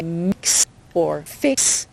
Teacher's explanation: That's actually a K and an S together. So when you say mix or fix, you're actually saying KS at the end.